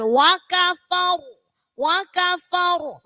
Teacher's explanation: sebelum ro matinya itu harokatnya fathah, maka harus dibaca tebal. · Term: ro tebal